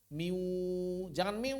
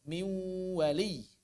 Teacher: harus ada suara wawnya. Karena suara mulutnya suara waw